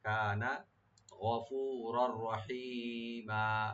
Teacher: গ এখানে রাইট দিবেন, গদায় ডিপ করে। আর রার উপরে যে তানবিন আছে, তানবিনের উপরে যেহেতু রা আসছে এখানে হরফে ইয়ার মালুম থেকে, এখানে ইদগাম হবে উইদাউট গুণনা, গুণনা ছাড়া।